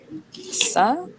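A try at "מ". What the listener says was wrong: That last one is Ma. So the Sa is more round. Like if you see it up here in Sapar, this is the Sa. It's a bit rounder. And then this is the Ma.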